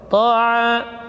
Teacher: jadi yang tebal hanya huruf ta, ainnya tidak boleh ditebalkan, ya, karena ain bukan huruf tafkhim.